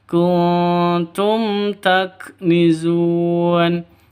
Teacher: mim mati bertemu dengan ta jelas terang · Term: izhar syafawi